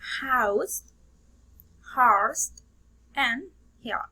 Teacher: Its place the articulation is glottal. There is a closure of the vocal fold, forming an obstruction in narrow, which causes friction but no vibration.